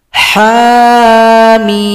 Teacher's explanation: Cara bacanya harus diurai. Ha dua ketukan, mim enam ketukan. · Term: huruf muqataah